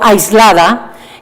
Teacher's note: Pues, por ponerles un ejemplo, en el habla los sonidos no se pronuncian de manera aislada. Cuando yo digo aislada y estoy pronunciando la S de aislada, ya estoy formando la L que viene después. Y cuando estoy acabando con la L, ya estoy pensando en la A y ya la estoy conformando. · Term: coarticulación